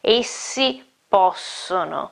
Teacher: You can hear that my sound lasts almost twice as long as a single consonant. Obviously it's also stronger, but especially it's longer, okay. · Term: double consonant